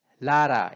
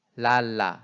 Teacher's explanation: 라라는 사실 앞에는 L 발음처럼 했지만 뒤에 L은 R에 가깝게 발음을 한 거예요.